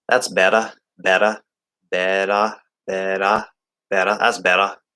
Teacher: I don't think they do a T. I think they make it a D like we do.